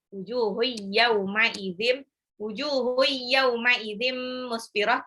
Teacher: Yaumai tanwin ketemu ya itu idgham biguna, dilebur tapi harus ditahan ya.